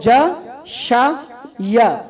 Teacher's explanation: یہ ہوگا بیچ زبان سے, زبان کا درمیان ہے